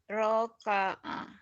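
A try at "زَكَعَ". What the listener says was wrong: Zai. Iya, zaka'a ya, bukan roka'a. Ya, kalau nggak ada titiknya roka'a benar.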